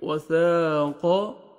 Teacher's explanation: الف مد ہے، آپ نے 1 سیکنڈ آپ نے سا کو کھینچنا بھی ہے